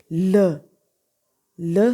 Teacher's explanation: इसमें आर्टिकुलेटर की पोजीशन क्या होती है कि आर्टिकुलेटर्स कंप्लीट क्लोज होते हैं in the centre of the mouth, mouth के सेंटर में कंप्लीट क्लोजर होता है आर्टिकुलेटर्स का। तो एयर जब लंग्स में से आती है तो साइड्स ऑफ द टंग में से गुजरती हुई बाहर निकल जाती है। तो एज अ रिज़ल्ट जो साउंड प्रोड्यूस होती है उसको लिक्विड्स और लेटरल कहते हैं। · ल साउंड आप प्रोड्यूस करते हैं तो क्या होता है, ल आपका जो टंग का सेंटर पार्ट है वो अपर फ्रंट टीथ के टीथ रिज के साथ अटैच हो जाता है, और जो टंग की लेटरल साइड्स हैं वो खाली होती हैं